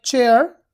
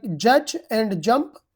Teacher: We use the tip of the tongue and teeth ridge and there we stop the air completely and then make the air passage narrow there to say them